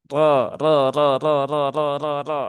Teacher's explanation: Maka rnya dibaca dengan tafkhim ya dengan tebal ya dengan tebal dengan cara apa? Diangkat sininya ya diangkat pangkal lidahnya.